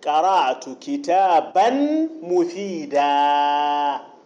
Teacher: التنوين من الكلمة الثانية يبدل ألفا